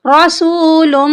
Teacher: यहाँ पर मीम मुशद्दिद है, मीम पर हम गुन्ना करेंगे। गुन्ना का मतलब है नाक में आवाज ले जाना।